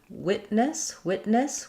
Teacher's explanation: So first we have in witness, we have first syllable stress. Letter I says the I sound.